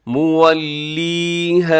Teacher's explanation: مولیھا، اور آگے الف مدہ ہے، الف سے پہلے ہا کے اوپر زبر، تو اسے بھی تھوڑا سا آپ نے لمبا کرنا ہے، ایک الف